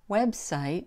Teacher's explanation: So the first syllable, web, is a little more stressed. But the last syllable, site, drops.